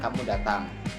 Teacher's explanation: intonasinya naik di akhir menunjukkan pertanyaan